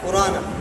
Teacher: نقل حرکت کا مطلب یہ ہے کہ حمزہ کا حرکت نقل کر کے ماقبل را کو دیتے ہیں اور حمزہ کو حذف کر دیتے ہیں